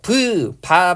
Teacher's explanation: 발음해 보면 아 입술 쪽에서 소리가 나죠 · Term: 양순